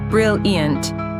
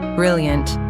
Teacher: Said with a high falling pitch, brilliant, it expresses genuine excitement. but said with a low flat [music] pitch, brilliant.